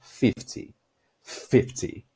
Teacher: No 50, a força tá na primeira sílaba